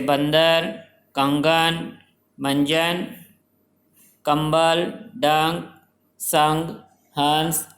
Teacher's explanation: तो ए के ऊपर जो अंग की बिंदी है उसे अनुस्वार कहा जाता है, और ए के आगे जो 2 बिंदियां हैं उन्हें विसर्ग कहा जाता है। अनुस्वार, इसके उच्चारण में हवा केवल नाक से बाहर निकलती है।